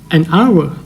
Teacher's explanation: ตัวHในตอนต้นของhourจะเงียบเราจะไม่ออกเสียงว่าHowแต่เราจะออกเสียงว่าOur